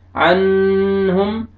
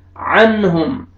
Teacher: नून साकिन के बाद हुरूफ हल्की में से हा आ रहा है, आपने यहाँ पे इजहार करना है